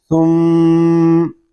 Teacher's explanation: ثا میم پیش ثم، میم شدد ہے، اس کو غننے کے ساتھ پڑھیں گے. اس میں شروع ہی سے غنہ کریں گے کیونکہ میم شدد میں ہمیشہ غنہ ہوتا ہے